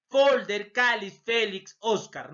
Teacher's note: La mayor fuerza de voz, penúltima sílaba.